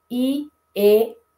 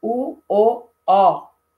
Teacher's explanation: em português, as nossas anteriores não fazem o arredondamento. Então, I, E, mas as posteriores fazem arredondamento.